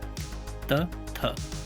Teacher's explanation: जैसे देखिए त, थ, तो इनको जैसे आप बोलते हो तो आपकी जीभ जो है ना वो आगे वाले दांतों से मतलब दंत से टकराती है, तो इन्हें दंत्य वर्ण कहा जाता है। फिर है ओष्ठ वर्ण, यानी होठों का प्रयोग करके बोले जाने वाले वर्ण।